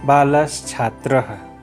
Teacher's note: यहाँ बालः के अंत में विसर्ग है, विसर्ग के पश्चात छात्रः का छ वर्ण है जो व्यंजन है, इसलिए बालः के विसर्ग को तालव्य सकार होकर रूप बन गया बालस् छात्रः